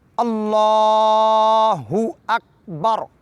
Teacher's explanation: اک کی کاف کو باریک پڑھنا ہے اور متحرک نہیں ہونے دینا